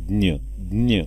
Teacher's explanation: ज्ञ उच्चार करताना बघा द न य असं ऐकू येते बघा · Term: विशेष संयुक्त व्यंजन